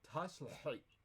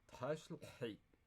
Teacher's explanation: The epiglottal really colors that vowel.